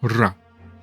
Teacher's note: a trilled R, R, though it's often a tap in clusters